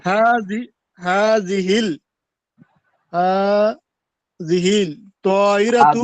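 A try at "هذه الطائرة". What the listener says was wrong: হাজিহিত, হাজিহিল হবে না, হাজিহিত।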